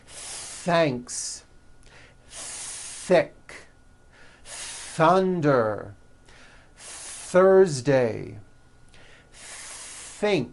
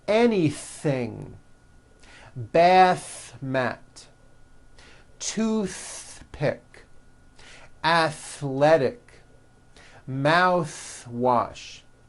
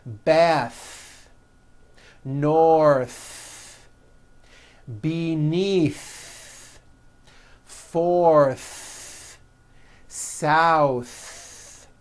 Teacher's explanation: You must stretch out the TH sound and hear the air friction.